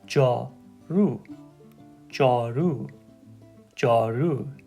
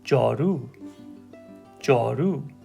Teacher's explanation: Notice how I'm putting just a slight emphasis on the ru sound.